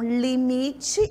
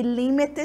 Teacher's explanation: no limite a minha sílaba tônica tá no mi e no espanhol está no li